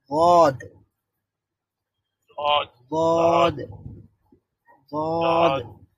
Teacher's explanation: মাখরাজটা বলেছিলাম জিহ্বার গোড়ার কিনারা, তার মানে হচ্ছে জিহ্বার শেষ ভাগের এক পার্শ্ব, জিহ্বার শেষ ভাগের এক পার্শ্ব সামনের উপরের এক পার্শ্বের, মানে সামনের না, তার বরাবর উপরের এক পাশের দাঁতের গোড়ার সঙ্গে লাগিয়ে ওয়াদ উচ্চারিত হয়।